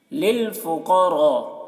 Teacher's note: للفقراء، قاف کو پر پڑھیں گے کیونکہ قاف حروف مستعلیہ میں سے ہے، را کو بھی پر پڑھیں گے کیونکہ را کے اوپر زبر ہے، اور یہاں پر مد متصل ہے کیونکہ حرف مد کے بعد حمزہ اسی کلمہ میں ہے تو مد متصل ہے۔